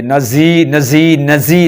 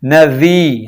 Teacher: ذال کو اس میں ہمیشہ نرمی کو ملحوظ خاطر رکھتے ہوئے سیٹی کی آواز پیدا نہیں ہونے دینی، جس طرح کہ زا کی آواز ہوتی ہے، نزی نہیں کرنا، نذی، اور جو سامنے کے 2 دانت ہوتے ہیں اوپر والے، زبان کی نوک جب اس سے لگتی ہے نرمی کے ساتھ وی تو یوں ادا ہو جاتا ہے۔